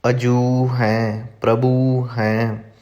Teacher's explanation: ਇਸ ਪੌੜੀ ਵਿੱਚ ਜੋ ਪਾਠ ਆਇਆ ਅਜੂ ਜਾਂ ਪ੍ਰਭੂ, ਇਹ ਪਿਛਲੇ ਅੱਖਰ ਨੂੰ ਜੋ ਦਲੈਂਕੜ ਲੱਗੀ ਹੋਈ ਹੈ ਥੋੜ੍ਹਾ ਜਿਹਾ ਲਮਕਾ ਕੇ ਲੰਬਾ ਕਰਕੇ ਪੜ੍ਹਨਾ ਹੈ